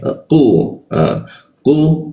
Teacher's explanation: Lidahnya kita naikkan sehingga rongga udara terkunci dan tidak ada hembusan udaranya.